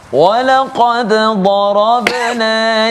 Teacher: Dad itu kita pergi ke tepi lidah, ya, tepi gusi kita, dan kita tekankan pada huruf dad.